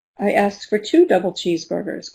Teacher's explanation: if you listen carefully, the stress is on 2.